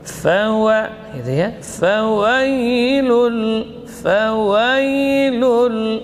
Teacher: Ya sukun sebelumnya fathah, ini madlin. Jadi wawnya tidak boleh cenderung ke ya.